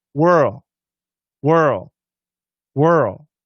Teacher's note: It's a lazy L, and it just fades.